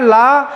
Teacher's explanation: जीभ का जो आगे का हिस्सा होता है वो ऊपर जाता है और वायु इधर उधर से क्या हो जाती है? पार्श्व हो जाती है, निकल जाती है। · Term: पार्श्विक व्यंजन